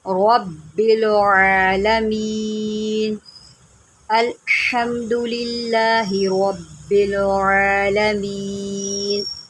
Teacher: عین کے اوپر کھڑا زبر ہے، اس کو ایک الف کی مقدار میں لمبا کریں